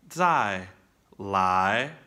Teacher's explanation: when you say 来, the second tone, and they're linked together, then that 来 has to rise up, okay? From the low spot where the 在 finished. · If I say 再来, like come again, do it again, 再来, right? 再 is a fourth tone. It's exaggerated. It drops down, right? So when you say 来, the second tone, and they're linked together, then that 来 has to rise up, okay?